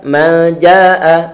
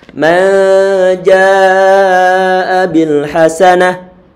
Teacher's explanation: Mad wajib artinya wajib dibaca melebihi 2 harokat, dibaca 4 ataupun 5 harokat. Berhubung ini antara huruf mad bertemu dengan hamzah dalam satu kata, jadi kata ja ini adalah satu kata, maka madnya disebut sebagai mad wajib muttasil.